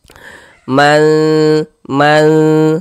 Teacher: Jadi di bagian manya itu ya suaranya itu kita tahan ya kita panjangkan sebentar sepanjang dua harakat. Man tasya di sini sya dibaca panjang. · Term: didengungkan